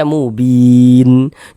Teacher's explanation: berwakaf di huruf yang tidak dibaca panjang ya, kita sukunkan sehingganya kita baca mubin seperti itu